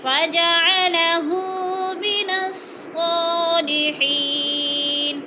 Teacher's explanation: فَجَعَلَهُ پہ الٹا پیش ہے، تھوڑا سا کھینچ کر پڑھیں گے